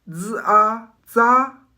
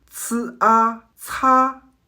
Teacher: Maintenez vos dents légèrement écartées à environ 2 ou 3 mm de distance pour créer un passage étroit pour l'air. Le Z est un son non aspiré. Il ressemble au Z dans le mot anglais zoo. Le C est sa version aspirée. Il équivaut au son ts dans le mot anglais cats, mais avec un souffle bien plus marqué et énergique.